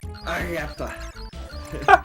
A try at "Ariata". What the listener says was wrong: Yeah, and you didn't roll that at all. Roll.